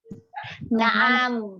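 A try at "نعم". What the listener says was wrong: Na'am juga pendek kan? Bukan na'am. Na'am. Itu ainnya panjang. Kalau yang huruf untuk jawaban na'am. Na'am. Ini memang kebiasaan orang kita itu banyak tambahan mat.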